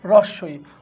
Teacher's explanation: উচ্চ সম্মুখ স্বরধ্বনি হচ্ছে রস্বই